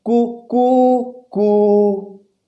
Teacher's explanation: तो इस मुर्गे की जो आवाज़ थी कू कू कू, तो इस कुकू कू मुर्गे की आवाज़ में जो पहला स्वर काम में आया वह है ह्रस्व स्वर, और दूसरा जो स्वर काम में आया वो है दीर्घ स्वर, दुगुना समय लगा है उसी में, और तीसरा जो स्वर काम में आया वो है प्लुत स्वर